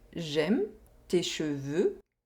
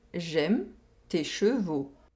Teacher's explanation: We have the [ø] sound in the first sentence, and the [o] sound in the second sentence.